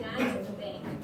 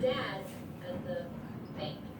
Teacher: dads and bank are both higher pitch. They are the stressed words in the sentence.